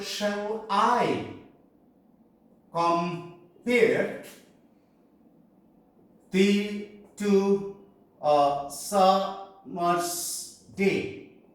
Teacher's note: These 5 parts, each part contain one unstressed syllable and then again a stressed syllable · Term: iambic pentameter